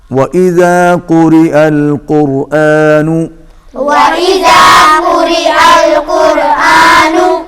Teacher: واو پر ہونٹ گول ہوں گے، قاف موٹا پڑا جائے گا، را باریک ہوگی کیونکہ را کے نیچے زیر ہے